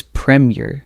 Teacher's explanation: It's premier, short and crisp with the stress on the first syllable